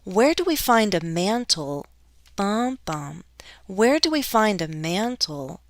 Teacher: there's a little fall rise because i'm not done with my sentence yet i cannot go completely down because it's not the end of · i'm stressing the final content word before that pause my voice has a different intonation pattern there where do we